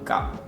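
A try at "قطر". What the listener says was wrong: You hear it, it's coming from here. Qa. Qa. This is how we pronounce it. Qatar. There is qa. So qa comes from here, very hard. Like for example, Filipinos ka.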